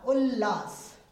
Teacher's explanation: त के सामने ल होने पर त ल में बदल जाएगा